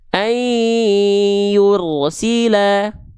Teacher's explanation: Ay yursila ay tuh dua ketukan atau dua hitungan. Dua hitungannya dua hitungan lambat. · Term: dua harakat